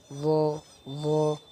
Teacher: জিহ্বার আগা, সামনের উপরের দুই দাঁতের আগার সঙ্গে লাগাইয়া ভ উচ্চারিত হয়